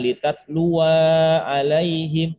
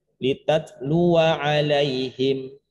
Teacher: Kalau sekiranya dia dibaca terus, wanya tetap tidak dibaca panjang. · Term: sifir mustadir